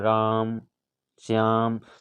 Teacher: जैसे हम किसी को पुकार राम, श्याम, तो ये श्याम लंबा खींचते हैं तो जो बीच में ध्वनि होती है इसी को प्लुत कहा जाता है। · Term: प्लुत स्वर